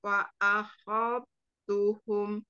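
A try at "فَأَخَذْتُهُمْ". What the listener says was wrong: Kurang dialirkan zalnya ya. Fa'akhal khal tuhum, jangan fa'akhal, jangan fa'akhal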